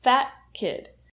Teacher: When you say the word fat, the t sound turns into a stop T, fat kid. So it kind of blends together with the word kid, like a fat kid loves cake.